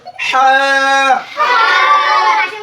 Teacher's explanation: হলকের মধ্যখান থেকে বের হবে